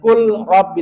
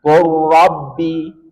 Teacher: lam sukun bertemu dengan ro, langsung masukkan ke ro. Jangan kul rabbi, tapi langsung kur, langsung masukkan ke ro.